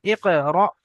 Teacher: হামজার উপরে যখন সাকিন থাকে তখন একটু ঝাটকার সঙ্গে পড়তে হয়